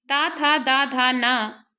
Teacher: दंत से उच्चारण होने के कारण दंत वर्ण है, इस वर्ग को त वर्ग कहते हैं।